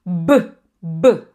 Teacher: Com som de B sozinho, vai ficar B. B, vai vibrar a corda vocal